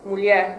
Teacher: In the word mulher, the R at the end is more strongly pronounced in Portugal than in Brazil. So in Brazil it's mulher, which the R is virtually silent.